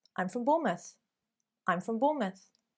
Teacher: in affirmative statements it should really remain more flat and in fact you find a decreasing a lowering of the intonation